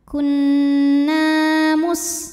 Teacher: Sinnya desis ya, karena ada sofir, sifat dari sin.